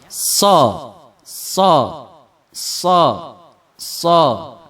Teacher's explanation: suara kayak suara siulan yang kecil tapi jangan sampai berbentuk suara siul · ada tambahannya di awal kayak ada desis di awalnya